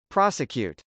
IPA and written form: prˈɑsəkjˌut (prosecute)